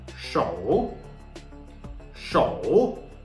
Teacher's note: Third tone. What do we do in the third tone? Falling, then rising.